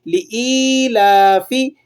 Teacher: یا ساکنہ سے پہلے اگر زیر ہو تو یا مدہ کہلاتا ہے، اسے ایک الف کے برابر آپ نے کھینچنا ہے